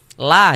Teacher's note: Sehingganya la kita baca panjang. Mad thabi'i panjangnya dua harakat